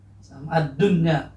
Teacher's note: Ini dalnya adalah huruf syamsiah, ya. Alif lamnya ini akan lebur dan tidak dibaca secara jelas karena itu diidghamkan